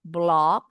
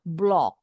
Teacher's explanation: Bacanya boleh seperti AO, block, atau O bulat, block. Boleh, kayak orang Inggris, block.